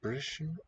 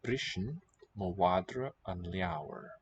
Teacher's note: it's the slender R, so it's trilled